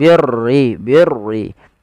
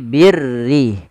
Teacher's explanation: huruf ra yang dibaca dengan tipis, yaitu ra tarqiq, yang dimana huruf ra-nya berharakat dengan berharakat kasrah.